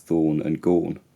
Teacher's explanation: thorn and gone rhyme in her accent as thorn and gorn